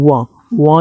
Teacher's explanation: वां जो है इसका उच्चारण नाक से होता है। बिना नाक से इसका उच्चारण नहीं होगा। करके देख लेना स्टूडेंट, नहीं होगा। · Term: नासिक के व्यंजन